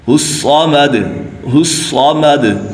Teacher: الصمد صاد میں مشدد یعنی جماؤ کے ساتھ پڑھیں گے